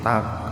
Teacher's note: Huruf qaf yang jatuh di tengah-tengah kata. Jadi membacanya dipantulkan gitu. Tak nah, secara ringan. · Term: qalqalah sugro